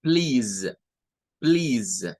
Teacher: Z significa que es un sonido vibrante